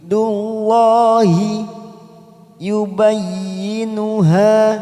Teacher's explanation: Wa tilka hudud dhamma bertemu sukun 2 harokat. Dullah dalam jalalah didahului dhamma. Kita baca tafkim.